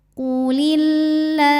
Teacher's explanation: lam jalalah kalau sebelumnya kasrah ini tipis maka ini kita bunyikan lah nyantai lidahnya dari lam pertama kita